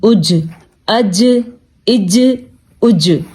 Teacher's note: حمزہ زبر جیم اج جھٹکا، کیوں؟ کیونکہ جیم ہمارے پاس حروف قلقلہ میں موجود ہے تو یہاں پہ جھٹکا بنے گا